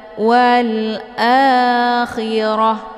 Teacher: Kemudian wal a, di sini ada alif lam, namanya alif lam al-qamariyah, karena sesudah alif lam terdapat huruf qamariyah yaitu a. Cara bacanya, alif lamnya dibunyikan secara jelas atau jelas bunyi l-nya. Wal akhirah, a dibaca panjang 2 harokat.